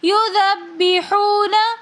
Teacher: یذبحون، یذبحون میں بھی واو ساکن اور اس سے پہلے پیش تو واو مدہ ہونے کی وجہ سے ہم ایک الف کی مقدار کھینچ کر پڑھیں گے